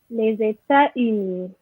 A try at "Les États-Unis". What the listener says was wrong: Yes, you miss your liaison. Okay, it's les États-Unis. You miss that one.